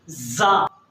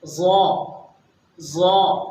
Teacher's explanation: یہ کچھ زا سے ملتا جلتا ہے، زا کی آواز تھوڑی سخت ہوتی ہے، زا، جبکہ ظا کی آواز تھوڑی نرم ہوتی ہے اور ہلکی ہوتی ہے